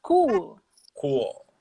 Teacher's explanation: Você não fala aquele L alemão que é cool, não é assim também. É leve, você põe a língua de leve no véu do palato, né?